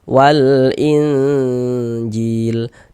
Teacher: Bunyi nun sukun atau bunyi tanwinnya itu yang kita baca samar. Karena di sini yang kita temui nun sok, maka nun soknya kita baca samar. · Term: ikhfa hakiki